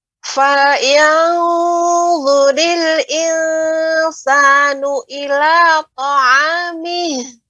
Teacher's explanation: Misalnya untuk falyanzu itu memang lebih harus lebih isti'la ya, za ya termasuk huruf isti'la. Falyanzuril untuk insanu dibaca dengan datar. Insanu dengan cara lebih dibuka rahangnya sedikit.